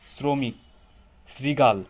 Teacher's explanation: খেয়াল করছেন উচ্চারণে কিন্তু দন্তাস টাইপের একটা ভাব চলে আসে।